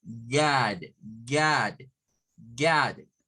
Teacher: es como decir la O, pero con nuestra boca en forma de A · es una O que comenzamos como una A